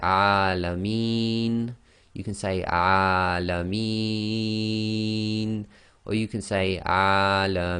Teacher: we're going to read the noon as sakin. So we can read this 2, 4 or 6 long. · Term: long vowel